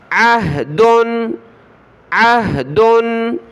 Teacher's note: عین کو گلے سے نکالنا ہوتا ہے